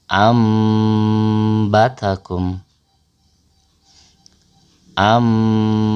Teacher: nun sukun atau tanwin bertemu huruf ba dibaca dengan dengung dengan merapatkan bibir. Bunyi nun sukun atau tanwin berubah menjadi huruf mim. Dibaca samar dan ditahan selama 1/2 alif atau 3 harokat disertai gunnah. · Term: iqlab